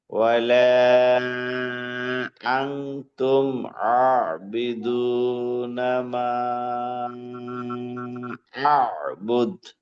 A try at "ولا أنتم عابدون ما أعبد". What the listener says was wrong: জি প্রথমবার ওয়ালা আং তুমি গুণাটা হয়েছিল, দ্বিতীয়বার গুণাটা হয় নাই, একটু কম হয়েছে। আর এই যে আতে আতে একটু টান হবে, একটু কম হয় যায় টান, হরকতের মতো হয় না, একটু হয় মোটামুটি।